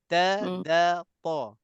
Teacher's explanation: Cuma huruf nit'iyah ni ta da ta ni hanya kepala lidah. Saya istilahkan gigit kepala lidah saja.